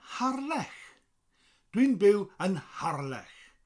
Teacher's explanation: But in Welsh, it's Har with a rolling R and then a lech. Lech. With that CH sound, that sound.